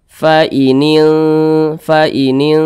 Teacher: lebih condong berbunyi n tapi disamarkan jadi kadar dengungnya itu dia lemah begitu Jadi lebih kuat kadar samarnya jadi lebih condong berbunyi n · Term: ikhfa Hakiki